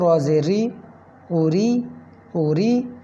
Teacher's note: را کے نیچے اگر زیر آ جائے تو وہ را کو پتلا کیا جائے گا